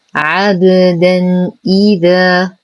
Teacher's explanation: نرقق العين، نقلقل الباء قلقلة صغرى فهي ساكنة في وسط الكلمة